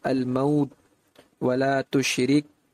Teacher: شدت کے قوی ہونے کی وجہ سے ان حروف کی ادائیگی کے وقت آواز بند ہو جاتی ہے، لیکن چونکہ ہمز بھی ہے تو کسی قدر ہمس ہونے کی وجہ سے سانس تھوڑی سی جاری رہتی ہے، لیکن اس کا احساس صرف قاری کو یعنی پڑھنے والے کو ہوتا ہے۔ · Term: ہمس و شدت